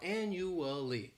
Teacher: This word has 4 syllables and the stress is on that first syllable. The second syllable, it's like you're just saying that letter, U. · the third syllable has that schwa